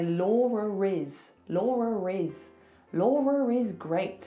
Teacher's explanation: So that schwa sound sometimes is spelt like ER. So if I have to link my name to something else that's a vowel, I have to put an R in there. So I say Laura Riz. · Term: intrusive R